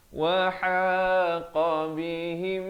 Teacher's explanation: ha pedas di tengah kerongkong